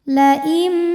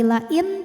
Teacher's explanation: Karena ada nun sukun menghadapi huruf ba, maka bunyi nunnya diganti jadi bunyi mim sukun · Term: iqlab